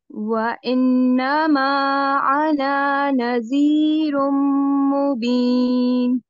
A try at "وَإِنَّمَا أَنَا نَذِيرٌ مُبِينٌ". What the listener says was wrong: اس کو نہیں کھینچیں. أَنَا نَذِيرٌ مُبِينٌ. یہاں بھی 2 کاؤنٹس غنہ کریں.